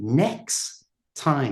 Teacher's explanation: He's saying next time because you don't pronounce that t.